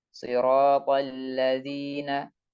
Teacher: Di tengah bacaan kita ketemu hamzah wasol, maka hamzah wasolnya tidak dibaca. Siratal ladzina, bukan siratal alladzina.